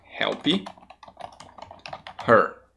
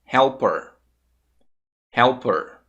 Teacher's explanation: de você tirar o som do h o h fica completamente mudo E você conecta com a consoante da palavra anterior